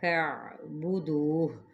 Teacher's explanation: ہا پہ ساکن کر دیا تو ہا کی آواز ضرور نکالنی ہے